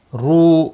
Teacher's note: رو واو مدہ بھی ہے، ایک الف کے برابر کھینچ کر پڑھیں گے